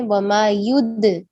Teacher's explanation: دال پہ قلقلہ. کیوں؟ کیونکہ یہاں حروف قلقلہ میں سے دال ہے